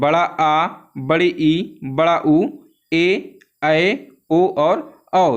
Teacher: दीर्घ स्वर जिनको बोलने में 2 मात्रा के बराबर का समय लगता है